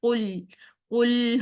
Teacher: कफ को मोटा रखना है और कफ की पेश को हमने पूरे गोल होठों से अदा करना है · लाम साकिन को हिलाना नहीं है, क्योंकि लाम उन 5 हरूफ में से, क़लक़ला के हरूफ में से नहीं है। क़ाफ़, तौ, बा, जीम और दाल की जिनको साकिन हालत में हम हिलाते हैं।